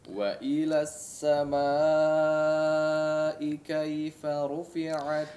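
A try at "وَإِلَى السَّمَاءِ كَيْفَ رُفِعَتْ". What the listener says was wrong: Kaifa ru. Coba diperhatikan tebal tipisnya ya. Huruf ra ya, perlu ditebalkan di sini ya. Jangan hanya pengucapan ra sekedarnya saja. Ru la. Ya, ru la. Ru diperhatikan ketebalannya.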